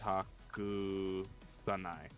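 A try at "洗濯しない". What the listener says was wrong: She? Shinai. It almost sounds like you said shanai.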